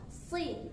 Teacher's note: si ya, pangkal lidah naik ya, tapi tetap berbaris kasrah. Si tetap tebal dia walaupun berbaris kasrah.